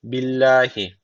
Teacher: Allah lafzı burada arkadaşlar ince okunması gerekiyor çünkü öncesindeki harfin harekesi altta Eee yani Allah lafına alttan geliş yapılıyor Dolayısıyla ince okunacak billahi